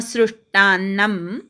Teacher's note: स अधिक रुकार मिळून श्रु होतो त्यामुळे म वर आघात येत नाही